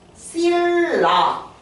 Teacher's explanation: 뒤에 있는 리을 때문에 앞에 있는 니은이 바뀌었어요 거꾸로 올라갔어요 그래서 이걸 보고 뭐라 그래요 얘는 방향이 거꾸로 갔지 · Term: 역행동화